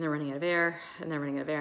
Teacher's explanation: without any air it's really hard to get normal voice and it starts to get more froggy at the end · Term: vocal fry